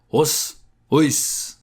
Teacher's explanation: I took the lowest voice to make it sound even more manly